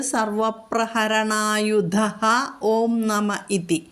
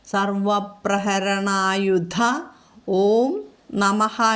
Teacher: ഓ എന്നുള്ള സ്വരാക്ഷരം വന്നതുകൊണ്ട് നമുക്ക് അവിടെ ആ വിസർഗം വിടാം